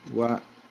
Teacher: Y acá tiene sonido de I latina, entonces, internamente, Uruguay. La vocal tónica es la A, rodeada de vocales átonas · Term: triptongo